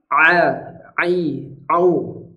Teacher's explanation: Ain ini makhrajnya adalah tengah tenggorokan jadi Ain bukan dari hidung